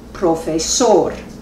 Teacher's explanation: Las palabras no verbales que terminan en otras consonantes son agudas, es decir, que el acento prosódico recae sobre la última sílaba